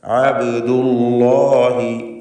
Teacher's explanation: അല്ലാഹ് എന്ന ഇസ്മുൽ ജലാല ഇതിൽ തഫ്ഖീം കൊടുത്തുകൊണ്ട് ലാമിനെ ഉച്ചരിക്കണം.